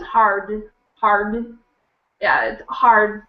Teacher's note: I will hardly say the D i'll just say hard